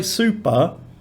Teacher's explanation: that sounds like you're in between a b and a p